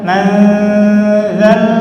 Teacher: Ujung lidah dengan ujung gigi seri atas dikeluarkan sedikit lidahnya.